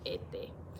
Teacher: las personas de la República Dominicana han perdido la S final.